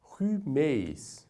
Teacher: neste caso a vogal ou aqui a semivogal y será pronunciada de maneira áspera aspirada